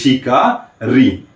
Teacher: तो ये ऋषि का री, तो ऋषि का री का जो उच्चारण स्थान है, अर्थात ऋषि का री का उच्चारण करते समय हमारे अंदर से आती हुई वायु मूर्धा के पास से होके गुजरती है, अर्थात ऋषि का री का उच्चारण स्थान क्या हो जाएगा, मूर्धा। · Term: मूर्धन्य